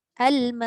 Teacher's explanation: Dekat Hamzah jahar syiddah tahan dua-dua.